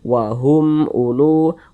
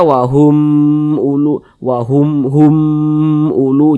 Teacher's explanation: setelahnya huruf hamzah bukan huruf ba bukan huruf mim maka hukumnya izhar syafawi baca jelas tak berdengung dia Jadi humnya itu kita baca pendek